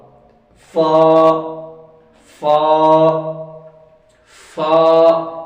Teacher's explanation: جو اوپر والے دانتوں کی جو نوک ہے وہ نیچے والے ہونٹوں کے اندرونی حصے سے لگائیں گے تو فا ادا ہوگا